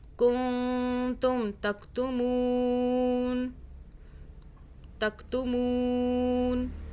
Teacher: یہاں پہ نون ساکن کا قاعدہ ہے، یعنی کہ اخفا والا قاعدہ آ رہا ہے، اس کے آگے تا آ رہا ہے، نون ساکن کے آگے تا اخفا کا حرف ہے، تو ہم اس نون ساکن پر نون کو چھپا کے پڑھیں گے، یعنی کہ ہم اس نون کو ادا نہیں کریں گے، کن نہیں پڑھیں گے، نون کو چھپائیں گے، زبان ٹچ نہیں ہوگی تالو سے